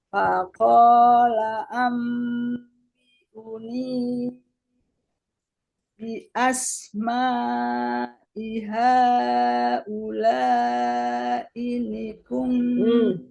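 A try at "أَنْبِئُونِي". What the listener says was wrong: Kepanjangan Bu nanti. Ambiuni. Ni-nya satu ayunan.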